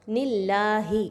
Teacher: اللہ سے پہلے والے حرف کے نیچے زیر آ رہی ہے، نون کے نیچے، تو آپ یاد رکھیے کہ ایسے حرف جلالہ کو ہم باریک پڑھیں گے، پر نہیں پڑھیں گے۔